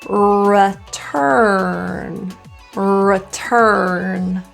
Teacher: so we'll curl the tongue two times